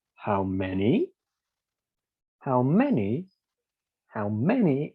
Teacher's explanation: for the rise and fall we go from the bottom to the top and we go down again